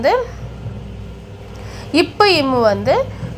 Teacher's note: மேல் உதடும் கீழ் உதடும் பொருந்துவதால் பிறக்கிறது